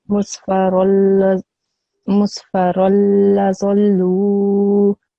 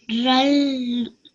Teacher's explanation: instead of saying run, you would say ra, and you would join the ra with the lam. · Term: idgham kamil